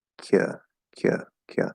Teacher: So is it possible to have more like a schwa with a little bit of lip rounding, but not fully?